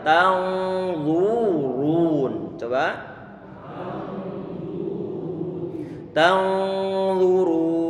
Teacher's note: Ra juga dia didommahkan, maka kita monyongkan bibir kita.